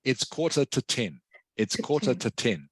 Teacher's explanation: so in this case the two becomes just a t sound